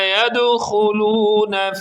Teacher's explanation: دال پر قلقلہ کریں گے اور خا کو درست انداز میں پڑھیں گے